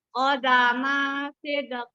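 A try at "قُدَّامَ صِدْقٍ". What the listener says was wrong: Mimnya nggak panjang. Mim nggak boleh panjang. Coba lagi.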